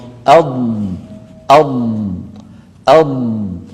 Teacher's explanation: صوت الضاد رخو، يعني قابل للمط